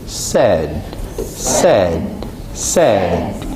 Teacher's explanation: 무성음으로 시작해서 유성음으로 끝나는, 그죠?